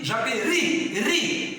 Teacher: Eu sei que a sílaba tônica está no ri, mas ela não é acentuada porque ela termina em i.